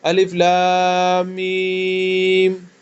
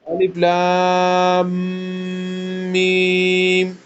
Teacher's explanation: لام میم کے درمیان میں تھوڑی وہ بنبناہٹ کی آواز آ جاتی ہے. لام میم ہوتی ہے نا، لام اور میم کے درمیان، تو اس آواز کو غنہ کہتے ہیں. · لام اور میم کے درمیان تھوڑی وہ بنبناہٹ والی آواز آنی چاہیے